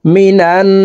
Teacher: ওয়াজিব গুন্না হরকতের নুনের উপরে তাসদিদ আছে এই কারণে এই নুন এই নুনের সাথে নাকের বাঁশি থেকে তিন সেকেন্ড পরিমাণ গুন্না করে ধরে রেখে পড়বো